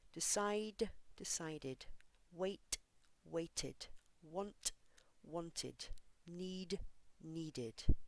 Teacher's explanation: words that end with a D or t sound have an extra syllable which sounds like ID decide decided wait waited want wanted need